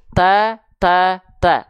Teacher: ujung lidah disentuhkan ke Pangkal gigi Sari atas · huruf ta kita lafalkan tanpa menjulurkan ujung lidah